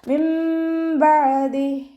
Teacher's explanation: നൂൻ സാക്കിനെ നമ്മൾ മീമാക്കി മാറ്റി മറിച്ച് ഉന്നയോട് കൂടി ഓതി കൊടുക്കുക. നൂനിൻ്റെ സൗണ്ടിന് അവിടെ കേൾക്കേ ഇല്ല. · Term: ഇഖ്ലാബിൻ്റെ